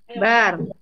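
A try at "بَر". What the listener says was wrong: Mendek. Bar. Bukan begitu. Bar.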